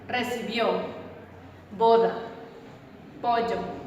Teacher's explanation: O cerrada. Los labios avanzan un poco hacia afuera, abocinándose y dando una abertura en forma ovalada. Abertura de la mandíbula de unos 6 milímetros.